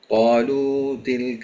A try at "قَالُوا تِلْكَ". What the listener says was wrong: അവിടെ നമ്മള് ഖാലൂ തിൽക, അവിടെ ലാമിനെ 2 ഹറക്കത്ത് നീട്ടിയാ മതി, 2-ൽ കൂടുതൽ നീട്ടാൻ പാടില്ല. അഥവാ ഖാലൂ തിൽക, ഖാലൂതി, ഖാലൂ, ഇതേ ഒരു ദൈർഘ്യമാണ് 2 ഹറക്കത്ത്.